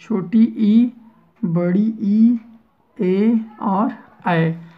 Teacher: जिन स्वरों के उच्चारण में जिह्वा का अग्रभाग ऊपर उठता हो, ठीक है, वो अग्र स्वर कहलाते हैं